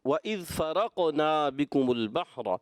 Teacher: جہاں قاف کی ادائیگی قلقلہ کرنا ہے تو تھوڑا اور واضح کریں